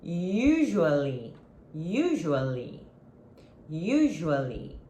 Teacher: the stress is in the first syllable. You're going to stress the first syllable.